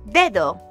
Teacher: The noise associated with the second D tells us that this is going to be a fricative consonant, so already we know that it can't be a D sound since D is a stop consonant.